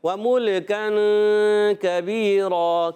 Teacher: व मुल्कन, अब यहाँ पर वाव पर ज़बर हरकतें नहीं खींचेंगे, मीम पर पेश है इसको भी नहीं खींचेंगे, मगर मीम की पेश लाम से मिलाएंगे और लाम को हिलाएंगे नहीं